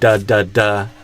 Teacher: my tongue is releasing a bunch of built up pressure. So the first part of the D, the tongue goes up, and then the pressure, and it stops the airflow, and the pressure builds up behind it.